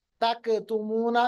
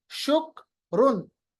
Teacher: क्योंकि कैफ की आवाज को वापस नहीं लाया जाता, रिबाउंड नहीं करते, कलकला नहीं करते।